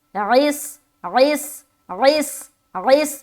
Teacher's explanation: عین بھی نکالنا ہے اور سیٹی بھی نکالنی ہے